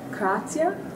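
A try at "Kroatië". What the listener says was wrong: Croatia, yeah. A bit more harsh in the beginning, so Croatia.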